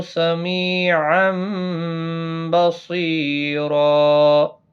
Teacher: یعنی تنوین کی آواز میم میں بدل جائے گی۔ نون ساکن یا تنوین کے بعد جب بھی متحرک با آتا ہے تو چھوٹا سا میم لگتا ہے، اس کو قلب کہتے ہیں۔